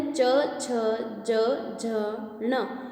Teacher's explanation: ये सभी स्पर्श व्यंजन कैसे बोले जाते हैं? तालु के माध्यम से। य के माध्यम से भी हम इन्हें बोल सकते हैं। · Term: तालव्य